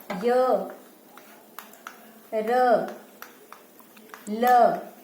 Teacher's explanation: जो ध्वनियां स्वर और व्यंजन के बीच में स्थित होती हैं उन्हें हम अंतस्थ व्यंजन कहते हैं। तो इन व्यंजनों का उच्चारण जब हम करते हैं तो उस समय जीभ का मुंह के किसी भी भाग से पूरी तरह से स्पर्श नहीं करता